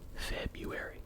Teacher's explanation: You do not pronounce the first R unless you need to remember how to spell it.